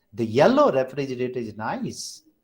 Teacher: yellow has primary stress and nice has secondary stress